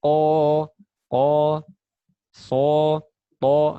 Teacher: Tebal itu karena terangkatnya lidah bagian belakang, bukan karena monyong. Semua huruf yang tebal tadi tidak boleh monyong ya. · Perhatikan bibirnya huruf qaf. Tidak mencucu kan, tidak monyong. Lidahnya yang terangkat, jadinya tebal.